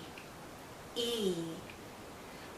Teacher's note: Our lips are very spread, very pulled out, and this is a long vowel sound. So think of your lips being pulled out like the vowel sound is being pulled out because it's a long sound.